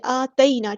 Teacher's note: حرکات مد آئی ہے، اور لمبا کریں گے ایک الف کے برابر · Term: مد اصلی